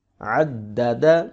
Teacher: عین زبر دال عد، دال زبر دا، عد، دال زبر دا، عدد، عین حروف حلقی میں سے ہے، حلق سے ادا کریں گے دال کو سختی کے ساتھ کیونکہ اس کے اوپر شد آ رہی ہے، اور ان کو لمبا نہیں کریں گے کیونکہ تینوں کے اوپر زبر آ رہی ہے۔